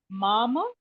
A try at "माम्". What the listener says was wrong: Mom, stop with the mom, like that halanta.